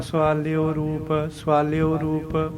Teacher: ਅਸੀਂ ਔਂਕੜ ਤਾਂ ਬੋਲਦੇ ਨੇ ਪਰ ਹਾਹਾ ਨਹੀਂ ਬੋਲਦੇ।